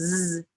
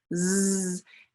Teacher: if i can get my students to start thinking about z my tongue's behind my teeth and actually i can feel that airflow that's continuous and it tickles a little bit and i can feel up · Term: z sound